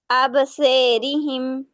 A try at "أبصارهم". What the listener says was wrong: से नहीं, से, से, से हो रहा है, स्वे करो, स्वे, ए स्वे।